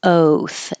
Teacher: oath the only thing to notice about the o is that it should be the American o for American English oath not just a pure o like oath oath remember that begins more in the uh position your tongue